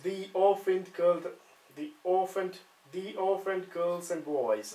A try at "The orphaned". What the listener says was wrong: Right, just watch you don't go up again. At the moment you're going the orphaned. What we want is the orphaned. The orphaned.